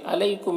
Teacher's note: یہاں پر یالین ہے، اسے نرم آواز کے ساتھ جلد پڑھیں گے۔